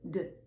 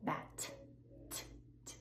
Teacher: D, you're using your voice. Bat, t t, no voice. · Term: voiced